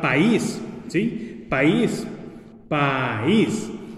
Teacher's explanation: Aquí la vocal débil se convertiría en fuerte cuando tenga el acento en ella. · Como es una vocal fuerte, A, y una vocal débil, I, usualmente las quisiéramos juntar, pero como la I tiene acento, no podemos. Entonces se forma el hiato y separamos esas sílabas y se forman dos sílabas en la palabra país, por ejemplo.